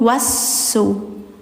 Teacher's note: jangan panjang karena setelahnya ada tasydid langsung